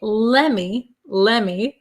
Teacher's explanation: okay it's going we start out with let me let me but of course in english these t's disappear